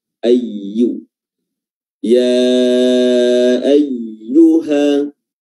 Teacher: Lalu ayyuha, di sini ada huruf ya yang tak bertasdid, ya, ayyu, ya. Makhraj huruf ya adalah wasatul lisan, pertengahan lidah yang diangkat hingga hampir menyentuh langit-langit bagian atas.